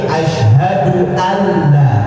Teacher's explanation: nunnya nggak kebaca karena di situ ada huruf tasdid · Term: Idgham bila ghunnah